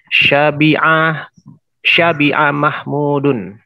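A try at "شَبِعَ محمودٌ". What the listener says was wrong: Syabi'ah sahih.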